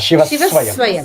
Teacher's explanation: Yeah, Shivaha Swayam is a Shivaswayam. Extra s will be given instead of dropping of the visarga.